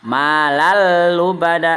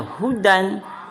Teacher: bila ketemu tanwin ketemu lam, maka dibacanya adalah meleburkan atau memasukkan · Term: idgham bila guna